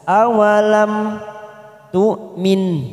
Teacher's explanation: mim sukun bertemu ta, idhar safawi kita baca jelas.